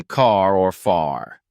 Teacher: pronounced in most words like in car or far notice how your tongue doesn't touch the roof of your mouth it curls slightly upward and backward in this sound practice holding a soft R by saying words like run read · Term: American English